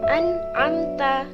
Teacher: Idhar halqi ialah apabila ada nun mati atau tanwin bertemu dengan salah satu 6 huruf idhar tadi, maka harus dibaca dengan jelas tanpa suara dengung sama sekali